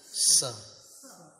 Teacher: दंत स का अर्थ होता है वो दांत के सहारे उच्चारण करना होता है।